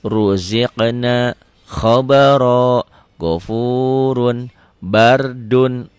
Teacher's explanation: Ro ini berbunyi O ya kalau berbaris fathah. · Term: tafkhim